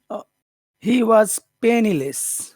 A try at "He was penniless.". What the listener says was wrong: He was penniless. Less. Can you go low? Less. Less. Penniless. You hear the different penniless. Penniless. I'm exaggerating. Penniless. Penniless.